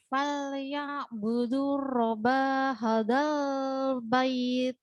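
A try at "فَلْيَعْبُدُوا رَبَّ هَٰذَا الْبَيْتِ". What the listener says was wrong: Ayo, di situ ada tasydid, ditekan robba. Falyabudu robba hadzal bait. Robbaha. Bait. Nah, jadi tidak boleh bait, nggih. Bait.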